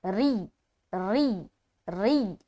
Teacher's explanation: जुर जुर जुर र या ज़ेर री र के नीचे ज़ेर है और या से मिलाते हुए आवाज सख्त बनेगी लेकिन र बारीक रहेगा।